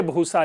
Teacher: और इसी बुस से भूसा निकला है, बस कुछ नहीं, ब आकर के महाप्राण बन गया है